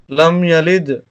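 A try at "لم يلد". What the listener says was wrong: Good.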